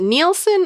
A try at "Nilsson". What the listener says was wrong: It's probably Nilsson. Yeah, there's no E. That's just, bad Canadian pronunciation. So sometimes my Canadian English comes out.